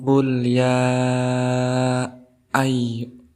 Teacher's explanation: di huruf ya ini dihukumi sebagai mad jaiz munfasil. Panjangnya 2-6 harokat. Kenapa? Karena ada huruf mad tabi'i yaitu alif bertemu dengan hamzah di lain kalimat.